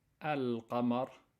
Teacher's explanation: when you have a moon letter, you have to pronounce clearly the lam